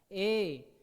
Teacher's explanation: हर्षऊ, दुर्गऊ का उच्चारण ओष्ठ से होता है, और ए और ऐ का उच्चारण कहाँ से होता है, कंठ और तालु दोनों से होता है। ए कंठ से भी और तालु से भी, ठीक है, जीभ ऊपर भी टच होता है। ए यहाँ से आवाज आता है और क्या हो रहा है, तालु से भी गूंज की आवाज निकलता है जब हम इसको बोलते हैं।